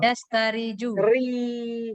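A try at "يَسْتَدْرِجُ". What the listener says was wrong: Ya itu dalnya mana? Kok dalnya hilang? Yastadriju. Jangan ada yang dihilangkan satu huruf. Yastadriju.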